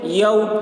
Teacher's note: واو لین کو نرم آواز کے ساتھ جلد پڑھیں، معروف پڑھیں، مجہول آواز سے بچیں